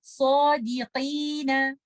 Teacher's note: कॉफ इस्तेला का लेटर है, ऑल्दो कि जब कॉफ के नीचे कसरा आ जाती है इसकी हैवीनेस कम हो जाती है, लेकिन फिर भी ये कैफ नहीं बन जाएगा। आप इसको इस तरह से नहीं पढ़ेंगे सौदीकीना क्योंकि ये तो कैफ है, तो हमने इसको पढ़ते हुए ध्यान रखना है सौदीकीना।